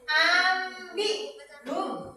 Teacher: Cara baca ikhlas itu non sukun atau tanwin diubah menjadi bunyi mim. Dibaca dengan dengung ringan, bibir sedikit tertutup seperti membaca huruf mim.